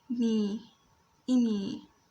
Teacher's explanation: So e, me, and you can see here that's a long, I have made a video about the long or let's say when you pronounce the kasra and has a ye after it, it becomes a long sound